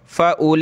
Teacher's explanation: देखें इस वर्ड पर मैंने आपको बताया कि वाव को नहीं पढ़ते, हमज़ा के बाद डायरेक्ट लाम को पढ़ेंगे और इसको खींचेंगे